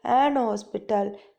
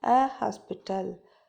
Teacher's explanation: In some British accent, the H in hospital is silent